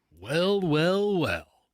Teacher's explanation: It's like an up upswing with your certain voice, making a little high pitch, and then a very precise pause in a certain way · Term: intonation